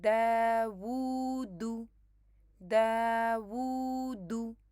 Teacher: یہاں پہ یہ دیکھیں داوودو، داوودو، تو دال 2 کاؤنٹس ہے، اور واو جو ہے وہ واو صغیرہ کی مدد سے آپ اس کو لمبا کریں گے کیونکہ اس کے اوپر ضمہ ہے